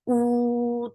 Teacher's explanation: 2 counts long. Circle your lips nicely.